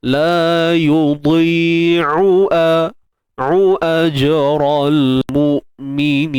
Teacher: La yudhi'u satu ain satu hamzah. Jangan takut nanti jadi dua-dua ain ataupun jadi dua-dua hamzah, ataupun ain tu bunyi kat hidung ke. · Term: huruf ain